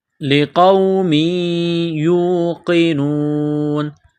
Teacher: ہے آیاتی لقوم یوقنون قاف کو موٹا کرنا ہے لقوم یوقنون تنوین کے بعد یا مشدد ہے تو تنوین پر غنہ کریں گے